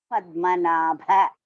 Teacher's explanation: Padmanabha, Da is Alpa Prana, Bha is Mahaprana.